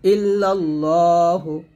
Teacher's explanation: ইল্লাল্লাহ না বলে ল বলবেন এটা মোটা করবেন